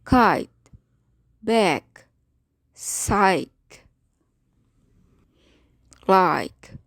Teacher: This sound is the voiceless equivalent of g. The place of articulation should be felt as being soft palate at the back of your mouth.